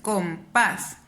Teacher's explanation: como mi voz suena más en la última sílaba es una palabra aguda